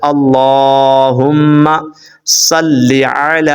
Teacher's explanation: آپ نے الف کو لمبا کرنا ہے، لام کو لمبا کرنا ہے